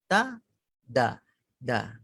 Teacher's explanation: Penghujung lidah berada di permulaan dua gigi atas